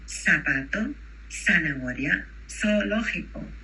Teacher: In Spanish, we have zapato. We don't say zapato with a Z. It's an S sound.